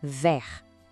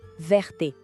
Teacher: Ouve com atenção o final, vert. O T fica em silêncio. · Aquele E a mais faz o T acordar.